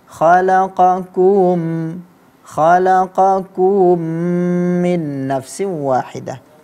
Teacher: Seperti khalaqakum min nafsin wahidah, ya. Ada yang membacanya seperti diseretnya dhammah itu sehingga muncullah mad, ya. Ada suara dhammahnya itu menjadi panjang, khalaqakum min nafsin wahidah.